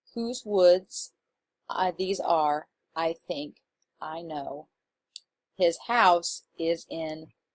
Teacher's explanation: if you read this segment out loud like I did you'll notice that your voice naturally wants to stress the last syllable